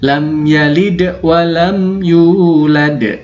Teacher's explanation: lam langsung pindah ke ya tanpa dengung sama sekali